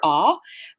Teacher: i'm actually not rounding my mouth for aw we don't have this sound in english if i were rounding